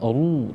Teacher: ro itu ketika dia berharokat fathah dan dhammah dia tebal